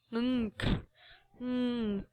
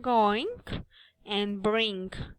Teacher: The tongue is raised at the back, touching the soft palate, and the noise is released through the nose.